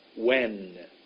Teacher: My tongue went behind my top teeth.